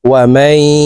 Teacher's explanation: নুন সাকিনের পরে ইদগামে বা গুন্নার হরফ ইয়া আসছে, এই কারণে এই মিম তাসদীদওয়ালা ইয়ার সাথে গুন্নার সহিত মিলাইয়া পড়ব। মাঝখানে জজমওয়ালা নুন বাদ পড়ে যাবে। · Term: ইদগামে বা গুন্নাহ